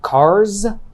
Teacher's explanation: after other voiced consonants and vowels think about the word car it ends in a r sound which is voiced therefore we pronounce the s in the plural noun form as z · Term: z sound